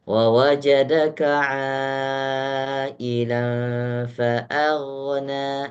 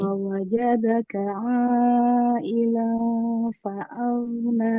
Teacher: A-nya tipis. Fa'aghna, ro-nya baru tebal.